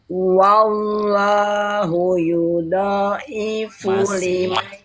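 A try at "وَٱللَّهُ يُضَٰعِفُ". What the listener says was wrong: Masih dilipat itu masih yudo. Kalau do berarti kan da. Dia bukan tapi do. Do. Dia ujung lidah lempeng aja, datar aja, jangan di Terus nekannya jangan keras-keras ya. Nekannya jangan keras-keras, lembut aja.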